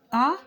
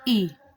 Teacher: आ का उच्चारण स्थान है कंठ और ई का उच्चारण स्थान है तालव्य